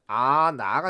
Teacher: 그러면 발음이 아나가 된다는 얘기죠. 이때 발음이 안하가 아니란 얘기예요. 왜? 히읗 탈락이 일어났기 때문이죠.